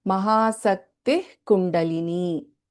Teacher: So you can notice the Visarga is not fully chanted here.